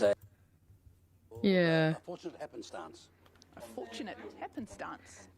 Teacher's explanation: is there some crazy vocal fry happening right then?